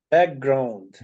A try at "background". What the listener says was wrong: So the K, you are omitting the K. So you have to pronounce the K. So you have to say background, not background.